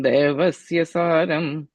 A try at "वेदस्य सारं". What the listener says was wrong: Second line, second word is Vedasya. I think you switched, you said Devasya. So Vedasya Saram.